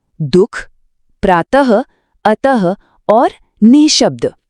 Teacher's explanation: और जब हम इसे बोलते हैं ना तो गले से बहुत ही हल्की सी श्वास या हवा बाहर निकलती है जो सुनने में एकदम ह अक्षर जैसी लगती है। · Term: विसर्ग